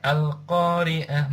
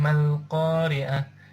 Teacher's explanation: yang kedua apabila Alif Lam Qomariah berada di tengah ayat washal di tengah ayat huruf Hijaiyah Alif tidak dibaca dan huruf hijaiyah lam tetap dibaca sukun